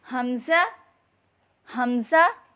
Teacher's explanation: حلق کے نیچے والے حصے سے ادا کریں